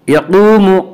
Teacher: یقوم قاف کو اوپر پڑھیں گے، قاف حروف مستعلیہ میں سے ہے، حروف مستعلیہ 7 ہیں جن کا مجموعہ خصہ ضغط نقص ہے جو ہمیشہ ہر حال میں پر پڑے جاتے ہیں۔